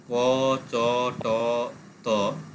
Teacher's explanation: টা বলতে গেলে ক বলার সময় দেখো ঠোঁট স্পর্শ করছে না ক চ ট ত এগুলো বলার সময় ঠোঁট স্পর্শ করছে না